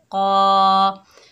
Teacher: तस, कौफ के ऊपर खड़ा ज़बर है, एक अलिफ की मिकदार खींच कर पढ़ेंगे। कौफ हरूफ इस्ताला में से है, मोटा पढ़ा जाएगा।